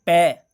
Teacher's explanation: सबसे पहले हमारे होठ जो हैं वो आपस में स्पर्श होते हैं, उसके बाद इनकी ध्वनि बाहर आती है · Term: ओष्ठ